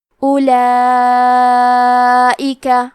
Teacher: اس مد میں ہم اپنی آواز 4 مد کے برابر لمبی کریں گے